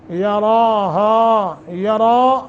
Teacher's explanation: را کو موٹا بھی کھڑی زبر ہے ایک الف کے برابر لمبا کرنا ہے